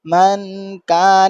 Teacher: من کان, اب یہاں پر دیکھیں نون پر اخفا ہو رہا ہے, نون پر جزم ہے اس لیے اخفا کر رہے ہیں ہم. من کان, نون ناک کے اندر آواز کو چھپانا ہے